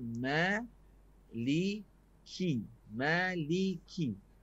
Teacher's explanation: Huruf kaf ni ada angin sikit. Maliki. Angin tu angin yang selamba sajalah.